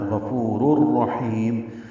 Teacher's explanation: رر میں را کا را سے ادغام کر دیں گے، تنوین کے بعد را آیا ہے اس لیے ادغام ہو رہا ہے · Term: ادغام کامل